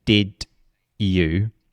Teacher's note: you might get like a CH sound there